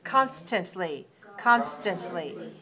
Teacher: Which syllable is stressed? The first one, right.